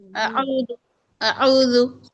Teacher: आ को क्यों खींचते हैं हम तावुज में? आ को खींचना ही नहीं है ना।